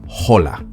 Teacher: the H is silent in Spanish